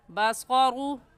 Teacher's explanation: बसरु में ग़ा के ऊपर पेश है तो ग़ा को पुर यानी मोटा करके पढ़ेंगे। और मोटा करने का तरीका क्या, आपके दोनों होंठ गोल हो जाए।